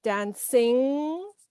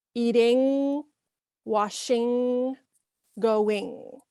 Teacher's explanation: the ng sound with the tongue up is a sound that is possibly unique to English and may take some practice, but try not to pronounce that G separately at the end.